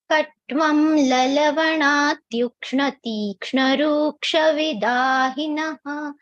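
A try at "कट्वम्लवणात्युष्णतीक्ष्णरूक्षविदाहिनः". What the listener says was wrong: Here, did you chant Tushna or Tukshna? Tushna.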